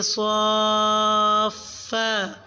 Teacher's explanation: لفظ صافات ویقبضن میں صاد کی مد کو 5 الف کے برابر لمبا کھینچیں